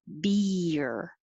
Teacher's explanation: And 14, your tongue has to go very high for the E, beer, and it slides down. So it's almost two syllables because you go from very high to low and curled back. So if you practice it that way, beer, it will sound good.